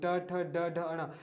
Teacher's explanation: इनका उच्चारण मूर्धा से होता है इसलिए इसको मूर्धन्य वर्ण कहा जाता है